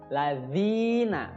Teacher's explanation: zi panjang 2 harokat namanya mad tabi'i